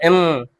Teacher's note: गले में ऐसा लग रहा है कि कंपन महसूस हो रहा है